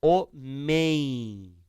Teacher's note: Apareceu o M, finalizando a última sílaba. Quando isto ocorre, o que acontece? Som nasal para a vogal anterior. · Quando é a última sílaba, o M ou ele produz o som de I, ou ele produz o som de U